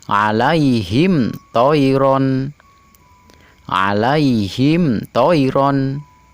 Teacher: Mim mati ketemu dengan huruf to, mimnya tidak boleh dibaca dengung. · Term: idhar syafawi